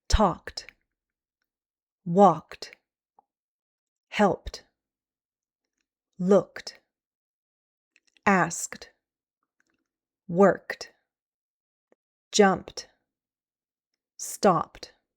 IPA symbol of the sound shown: t